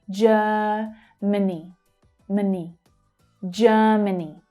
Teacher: The two second syllables are reduced and unstressed.